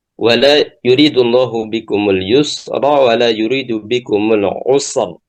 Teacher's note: Kemudian yang keenam, sakinah wa qablaha sakin wa qablaha madmum. Huruf ra-nya adalah sukun dan sebelumnya sukun dan sebelumnya lagi dhammah. Maka ini ra-nya dibaca tebal. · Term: ra-nya tebal